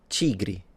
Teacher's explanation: Portuguese, of course, it was the only different one because instead of a T, it sounded like a ch, but that's once again because it's the Brazilian variety.